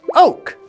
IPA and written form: əʊk (oke)